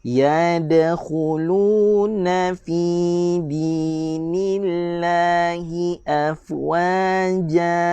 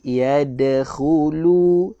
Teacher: Yang kedua, huruf dal ada qalqalah, lantunan. Huruf dal ada lantunan kecil. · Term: qalqalah sughra